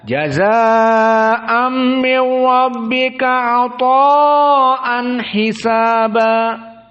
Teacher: 2 mad wajib muttasil dalam keadaan tawassut dibaca 4 harokat saja